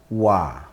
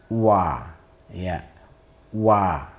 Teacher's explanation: makhrajnya berada di antara dua bibir, ya, dua bibir. Dengan cara memonyongkan terlebih dahulu, ya. Kita ucapkan wa, monyong dulu, wa, ya, wa. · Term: huruf wawu